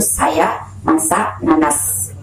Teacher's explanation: Konsonan frikatif alveolar S itu dihasilkan dengan menempelkan ujung lidah pada gusi atas sambil menjelaskan udara lewat samping lidah sehingga menimbulkan bunyi gesis.